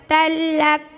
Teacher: 2 زبر تنوین کے بعد حرف یرملون کے 6 حرفوں میں سے لام آیا. 2 زبر کی تنوین کو بغیر غنہ کے ساتھ ملا کر پڑھیں گے، اس کو ادغام بلا غنہ اور ادغام تام بھی کہتے ہیں، جیسے تا لام 2 زبر تل لام کاف زبر لک تلک.